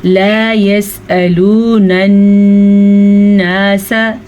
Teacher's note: नून का गुन्ना अदा कर लें, नून पे शद है।